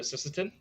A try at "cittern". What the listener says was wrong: Cittern. Cittern. There's like no S in the word.